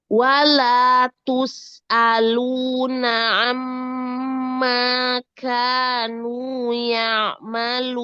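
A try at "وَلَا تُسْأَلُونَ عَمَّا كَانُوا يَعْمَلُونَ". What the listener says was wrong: Ya'ma. Jangan masuk ke hidung. Ya'malun. Jadi disempurnakan sifatul huruf, terutama yang punya sifat rokhwah, ya.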